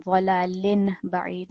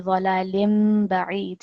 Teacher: So rather than dhalalin ba'id, it will be dhalalim ba'id. So this final sound on the lam will be the sound of a meme rather than the kasratain. And also we are going to pause for about 2 seconds when we join that with the ba.